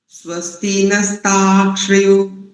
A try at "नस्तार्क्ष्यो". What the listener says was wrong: बहुत अच्छा उच्चारण। दो त्रुटियां हैं आपकी, देखो प्रथम वाली त्रुटि देखो पहले, नस्तार, नस्तार्क्ष, फिर यो को अलग कर दीजिए, नस्तार्क्ष यो।